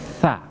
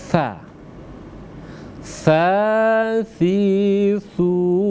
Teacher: Makhrajul huruf sa, yakni ujung gigi atas, ya, ini bersentuhan dengan ujung lidah. Sa. Ya, jadi lembut sekali dia.